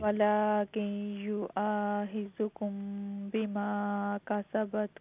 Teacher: میم ساکن کے بعد با ہے، جی اخفا شفوی